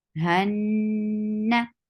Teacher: There is a longer time of gunna. You have to keep the sound in your nose for a longer time.